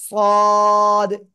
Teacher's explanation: সদ, চার আলিফ টান হবে, জিহ্বার আগা সামনে নিচে দুই দাঁতের পেট ও আগার সাথে লাগবে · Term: মোটা আওয়াজে